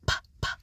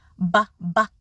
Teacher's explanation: The only difference between those two sounds is the P sound, p, p, does not vibrate the vocal cords, and the B sound, b, b, does vibrate the vocal cords.